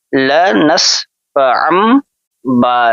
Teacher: تنوین کے بعد لفظ با ہے تو یہاں پہ ان نہیں پڑھیں گے بلکہ عین میم زبر ام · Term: اقلاب